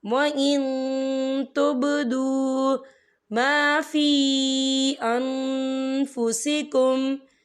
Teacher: وَمَا فِي الْأَرْضِ وَإِن تبدو، یہ دیکھیں وَإِن، یہاں نون ساکن ہے، نون ساکن کے بعد جو ہے تا آ رہا ہے، اور تا جو ہے اقفا کا ورڈ ہے، تو ہم یہاں اقفا کریں گے، نون ساکن کی آواز کو ناک میں چھپائیں گے